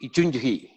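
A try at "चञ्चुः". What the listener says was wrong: It's like something Greek. It is Chanchuhu. See, if the first letter is cha. First letter is cha. the cha is there? So Chan Chuhu. Chanchuhu. Chanchuhu. Not Chanchuhi. Chanchuhu.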